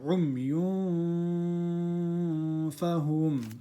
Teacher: here we do an ikhfa because fa is not a throat letter